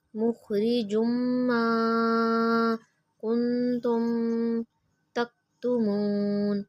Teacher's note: میم مشدد پہ غنہ کریں گے